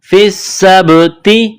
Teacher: سین پر تشدید ہے تو سین میں سختی کرنی ہے، سین میں سیٹی کی آواز پیدا کرنی ہے